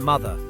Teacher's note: Just close your lips and let sound come through your nose. That's M, as in mother. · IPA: [m]